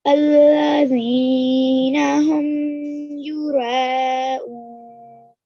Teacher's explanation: With the ra, again, the ra is pronounced with your mouth rounded